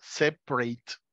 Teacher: esta A de separate es tan corto el sonido que pueden tratar de pronunciarla sin decir la A